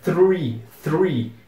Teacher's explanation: a gente coloca língua entre os dentes mas logo depois vem o r